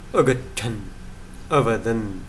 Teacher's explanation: एवमेव अगच्छन् अवदन् इत्येतयोः अन्ते नकारः श्रूयते, तेन तौ हलन्तशब्दौ।